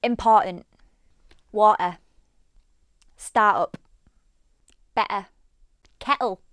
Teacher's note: You may sometimes hear the middle T or a double T being glottalized.